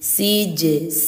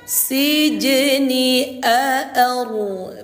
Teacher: Ini namanya qalqalah sugro ya. Karena huruf jimnya sukun atau mati berada di tengah kalimat, maka pantulannya ringan dan tipis.